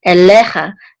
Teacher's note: This is an aleph with a tzere, which says and this is a lamed with a segol, and the yud together says eleh, and this is a chaf sofit with a kamatz, which says cha, elecha, and the accent's on the middle syllable because of this trope mark right here.